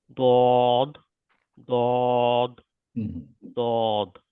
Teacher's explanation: জীবের একটা side usually আমি রাইট সাইডে চেষ্টা করি জি সাইডটা জিভের ডান সাইডটা উপরের গামের উপরের দাঁতের গোড়ার ডান সাইডে টাচ করবে